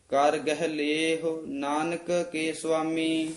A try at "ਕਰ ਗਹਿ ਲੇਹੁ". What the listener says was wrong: ਕਰ ਗਹਿ ਇਕੱਠਾ ਨਹੀਂ ਪਾਠ ਕਰਨਾ। ਕਰ ਗਹਿ ਲੇਹੁ, ਕਰ ਤੇ ਯਮਕ ਲਾ ਕੇ। ਕਰ ਨਾਮ ਹੱਥਾਂ ਦਾ ਹੈ।